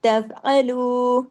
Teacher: وَإِن تف، تف باریکی کے ساتھ، جماؤ کے ساتھ، عین زبر آ باریکی کے ساتھ، جماؤ کے ساتھ، تفعلوا باریکی کے ساتھ، لام واو پیش لو، دو حرکات کھینچنا ہے۔ اگر یہاں پر ہم نے تفعلوا جلدی سے پڑھا تو لام پیش لو تو پڑھنے میں آئے گا، لیکن واو رک جائے گا، واو کا نقصان ہو جائے گا، نقصان حرف ہو جائے گا۔